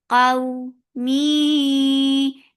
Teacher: So when you are attaching fatha with waw, you are making it soft. Qaw, mi, idgham with gunna. So you are keeping the sound in your nose for a longer time